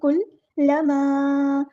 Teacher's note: ابصارہم کلما، کاف ہم نے یہاں پہ سمپل ادا کرنا ہے، لام مشدد ہے تو اس کو 2 بار پڑھیں گے، ایک بار ساکن کر کے ایک بار اس کی حرکت کے مطابق